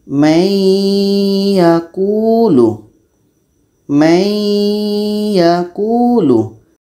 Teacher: proses dengungnya yang ada pada Nun terbawa kepada ya Ini namanya Idam naqis masuk secara kurang sempurna karena terbawa dengung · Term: Idgham naqis